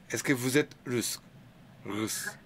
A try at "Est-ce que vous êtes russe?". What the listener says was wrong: And raise a bit your voice because it's a question. Est-ce que vous êtes russe?